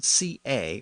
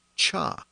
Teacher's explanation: the Latin CA or C Sound was often pronounced as cha around Paris